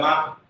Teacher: माँ बोल के देखो, थोड़ा सा ऊपर नाक में कंपन हुआ होगा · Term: नासिक के वर्ण